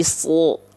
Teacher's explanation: Kenapa jadi O kedengarannya karena dia adalah huruf yang tebal